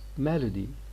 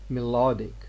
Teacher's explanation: melody by adding a suffix ek this fact is going to change the vowel following l it's no longer a schwa